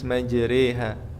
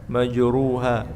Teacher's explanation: ra dibaca tipis apabila imalah. Dan ini hanya ada satu di riwayat Hafs an Asim dikata majriha, maka tipis majriha, bukan majruha tapi majriha.